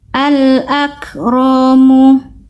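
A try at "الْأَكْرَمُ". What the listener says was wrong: Nah, ro-nya pendek ya. Kafnya bagus.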